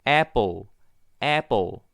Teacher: 얘는 Apple 동일하게 애 발음에서 피해했고 여기는 보통 이제 풀보다는 뿔에 가까운 바람이 되겠죠.